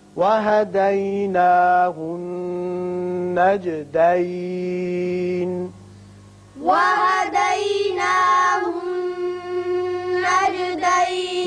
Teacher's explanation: یہاں نون مشدد ہے، غنہ کریں گے.